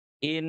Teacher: ini huruf nun sukunnya ditahan dua ketuk